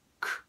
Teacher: All right, so let's take a look at the first example, liked. So this combination of the k and the ed ends in a t, and we call the k sound here unvoiced